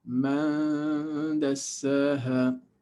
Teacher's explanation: And man dassaha, man, you are actually anticipating the pronunciation of the letter dal. So when you are pronouncing the nun, you are hiding it because your mouth is already making the shape of dal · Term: ikhfa